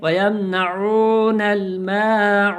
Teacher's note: واو ساکن سے پہلے پیش ہے تو تھوڑا سا کھینچ کر پڑھیں گے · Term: حرف مدہ